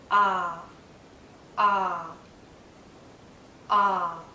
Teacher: it's a very open sound as well my lips are relaxed but my my mouth is in a very open position my · relaxed but my my mouth is in a very open position my tongue is low inside my mouth low and a bit forward so that the tip does touch the back of my bottom front teeth